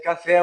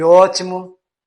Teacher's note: é grande a distância entre a língua e o céu da boca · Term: abertas